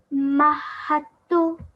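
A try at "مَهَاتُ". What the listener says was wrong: Well done. So pressure needs to be put on the ta, yeah? On the ta and the ha.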